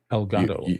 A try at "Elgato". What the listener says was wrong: You always slip an extra little e or something.